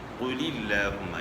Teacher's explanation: یہاں لام سے پہلے زیر ہے، اس لیے جو ہے نا یہاں لام باریک پڑھا جا رہا ہے